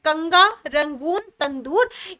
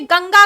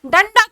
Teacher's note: जब आप इनका उच्चारण करेंगे तो हमारे मुख से जो ध्वनि निकलेगी वो आधे ना की ध्वनि निकलेगी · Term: अनुस्वार